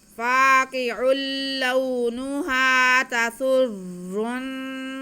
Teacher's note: آگے ہمارے پاس نون ہے اور وقف بھی آ رہا ہے، آیت ختم ہو رہی ہے تو نون کو ہم زبر ختم کر کے عارضی سکون لگا دیں گے. حرف مدہ کے بعد جب عارضی سکون آئے گا تو یہاں پہ مد عارض ہوگی، ہم وقف کھینچ کے کریں گے